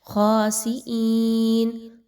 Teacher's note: خاسئین، خا موٹا ہے، اس کو موٹا کر کے پڑھیں گے. حمزہ یا زیر ای یا مدہ ہے، 1 سے 2 الف کے برابر پڑھیے